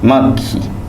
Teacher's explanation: द्वित्वों के पहले आने वाला स्वर हमेशा छोटा होगा।